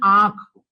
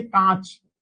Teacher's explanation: नाक से कम व मुंह से ज्यादा क्या निकलती है वायु निकलती है